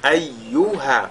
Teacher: Et souvent le ha ici on néglige sa lecture